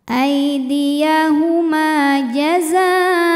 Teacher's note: Aidiyahuma, ma matobi'i dhahiri karena ada alif didahului harokat fathah, maka mim panjang 2 harokat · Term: mad tabi'i dhahiri